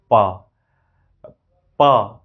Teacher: प एकदम air freely गया और लिप के पास आकर के हम उसको ओठ से उसको रोक दिए